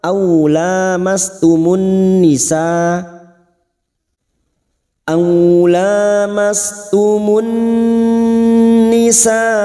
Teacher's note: mim sukun bertemu ta idhar safawi, mim sukun dibaca jelas tanpa mendengung